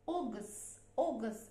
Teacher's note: long O sound, and then G, and schwa vowel